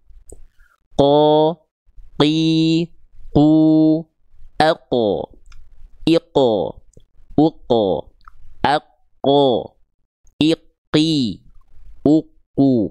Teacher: pangkal lidah huruf qof itu menyentuh ke langit-langit yang paling dalam atau langit-langit yang lunak teksturnya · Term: huruf qaf